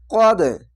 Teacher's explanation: না হতো এখানে থামা ভালো তার জন্য থেমে যাবেন কদ এখানে কলকলা ধাক্কা মেরে নিচে সাউন্ড আসবে